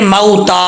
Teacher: तो यहाँ पर जो है वो वाव लीन का कायदा लग रहा है, वाव साकिन है, वाव साकिन से पहले जबर है, तो ये क्या है, वाव लीन है, तो इसको लंबा नहीं करेंगे। वाव लीन की निशानी है कि वाव लीन को लंबा नहीं करेंगे, अगर कोई लंबा करता है तो गलत है।